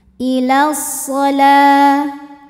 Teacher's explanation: Karena alif lam menghadapi huruf syamsiyah yaitu huruf shad, maka alif lam ini tidak kita baca atau disebut dengan idgham syamsi. Ya, jadi langsung masuk ke shad.